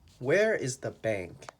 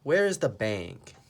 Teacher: On the word bank, your voice goes down.